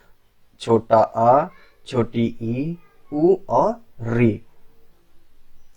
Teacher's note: जिनके उच्चारण में कम समय यानी एक मात्रा का समय लगता है उसे हर्ष स्वर कहते हैं